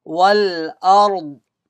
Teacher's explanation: فتحة came before ra sakin ra will be read with full mouth